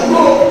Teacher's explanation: Orang Yaman nggak bisa ngomong qaf, ngomongnya go.